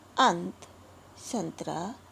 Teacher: अनुस्वार का उच्चारण नाक से किया जाता है